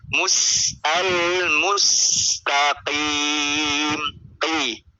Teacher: hanya ketika dia kasroh, dia kadar tebalnya itu hampir benar-benar hilang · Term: tafkhim nisbi